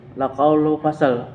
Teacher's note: Laqaulu fasal ikhfa hakiki karena ada nun mati atau tanwin secara bertemu dengan huruf fa. Cara membacanya samar-samar membentuk huruf fa.